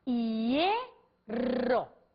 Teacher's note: o acento prosódico está na vogal E. Portanto, diante de I, diante de HI formando ditongo, eu posso ter Y.